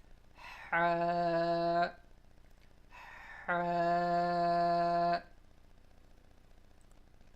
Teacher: Ha is pronounced from the middle part of our throat.